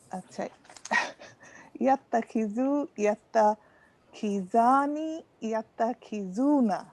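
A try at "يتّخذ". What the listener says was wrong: Nice.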